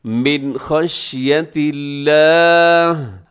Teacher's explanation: من خشیت اللہ، آخر میں جو لفظ اللہ ہے اس کو آپ نے باریک پڑھا ہے، کیونکہ لفظ اللہ کے لام سے پہلے تا کے نیچے زیر ہے تو آپ نے اس کو باریک رکھنا ہے. اسے خشیت اللہ نہیں پڑھ دینا، بلکہ من خشیت اللہ.